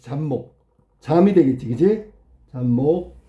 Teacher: 앞말의 받침 비읍이 미음하고 만나서 미음이 된 거야.